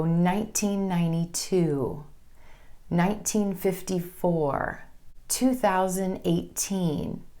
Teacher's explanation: If you're sharing the year number, you again want your emphasis to fall on that final number.